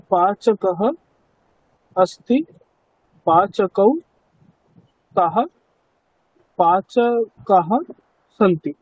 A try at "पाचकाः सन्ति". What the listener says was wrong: দেখুন এক বচন বহুবচন তো একই উচ্চারণ হয়ে গেল তাই না, কিন্তু বহুবচনে একটা আকার আছে না, তো কাজেই উচ্চারণে আমাকে ওই আকারটাকে স্পষ্টভাবে বোঝাতে হবে। পাচকাহ সন্তি বলুন একবার।